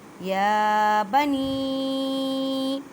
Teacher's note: یا ساکن سے پہلے زیر ہے، یا مدہ کا قاعدہ کریں، چھوٹی مد ہے، 4 الف کی مقدار میں کھینچ کر پڑھیں